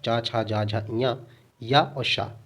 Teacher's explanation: चा, छा, जा, झा, इया, या और शा, इसका उच्चारण तालव्य से होता है।